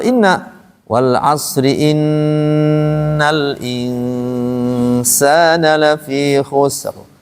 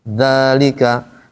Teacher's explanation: maka yang guna musyadadah dia akan lebih lama daripada yang dua harakat panjang